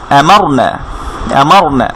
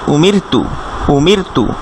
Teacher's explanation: একটু লিখে রাখতে পারি, র সাকিনের আগে র সাকিন, র এর সাথে সাকিন আছে সেজন্য র সাকিন বলছি আমরা। র সাকিনের আগে যদি ফাতহা থাকে তাহলে রটা মোটা হবে, আর র সাকিনের আগে যদি কাসরা থাকে তাহলে রটা চিকন হবে।